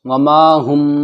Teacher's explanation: میم ساکن ہے، میم ساکن کے بعد با آ گیا تو اخفاء شفوی ہوگا غنے کے ساتھ